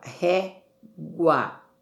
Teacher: O U é uma semivogal e o A é a vogal. Então, vejam só, aqui nós vamos ter um ditongo crescente oral.